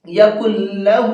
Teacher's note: نون لام کے اندر مکس ہو جائے گا اور یہ ختم ہو جائے گا، جیسا کہ آٹے میں پانی ختم ہو جاتا ہے مل کر کے، پھر نون نہیں پڑھا جائے گا۔